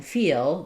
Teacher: And what matters more is that I want to make sure my vowels before that dark L are using vowel to vowel linking. So in E, I need a Y glide. I need to make sure that um when I'm saying feel that I'm not just going right to a liquid L or um a light L like feel where my whole tongue is lifting feel.